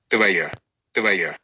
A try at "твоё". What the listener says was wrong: It sounds like твоя, but it's твоё.